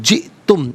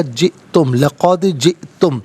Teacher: हमज़ा साकिन है, झटके के साथ पढ़ा जाएगा